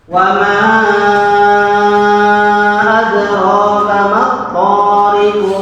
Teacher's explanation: Ada mantulnya, namanya qalqalah. Sebab ada huruf qalqalah qaf yang maksudnya baru datang disebutkan baca wakaf.